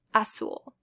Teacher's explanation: the Z is pronounced like an S